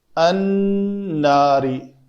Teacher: نون کے اوپر جب بھی تشدید ہوگی تو اس کے اوپر غنہ کریں گے ہم